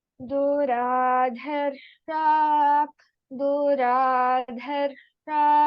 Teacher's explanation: This Duradharsha, the first one, Alpaprana dha, and next dha is Mahaprana dha.